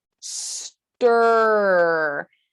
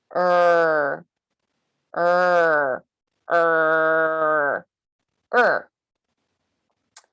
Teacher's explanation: But for now, think about the middle of the tongue being lifted, similar to the position, and the sides of the tongue being in contact with the upper molars with a jaw that is rounded but not tense